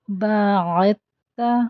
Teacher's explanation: عین کا خیال رکھنا ہے کہ یہ حمزہ نہ بن جائے اور دال ڈراپ ہو جائے گی کیونکہ آگے تا پر تشدید